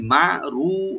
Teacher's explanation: রাটাকে deep করে এক আলিফ টানবেন